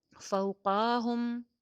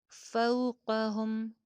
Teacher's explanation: کے وزن پہ فو، فو، پو، فو، فوقہم، فوقاہم نہیں ہوگا، قاف کی زبر کو لمبا نہیں ہونے دینا ، فوقہم، صافات، صاد موٹا حرف ہے، سیٹی والا حرف ہے،